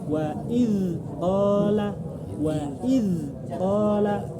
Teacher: Karena dilepas dari makhraj. Lidah nggak boleh dilepas, tetap di tempat, tetap ada angin yang keluar sampai kita beralih ke huruf selanjutnya. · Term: rokhawah